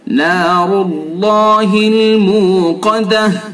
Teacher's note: रा को पुर करेंगे, अल्लाह के लाम को भी पुर करेंगे, काफ को भी पुर करेंगे